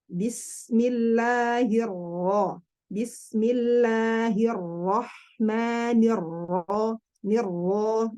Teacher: Kalau jalur Syam, huruf ro berharokat dan sukun pengucapan itu lebih terlihat kuat, lebih nampak ya.